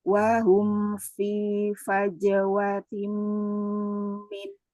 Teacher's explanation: dari perpindahan mim ke fanya humfi kan sama-sama bibir tuh cuman menggeser sedikit aja